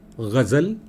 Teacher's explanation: ઉર્દુ અને પર્શિયન ભાષામાં ક ને ગ થોડા જુદા છે. એ આપણી જીભ જે આડે છે એનાથી પણ સહેજ નીચે જઈને જીભ અડે છે.